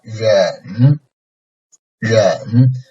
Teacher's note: So first don't make it down, ren, and then the second part of the third tone is an upcoming tone, but it's a very like slight and very brief upcoming